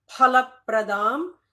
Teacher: There is no fa, as we all know. It is pha.